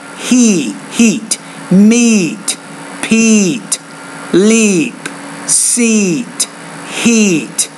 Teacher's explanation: the E the tongue is harder and you almost kind of smile when you say it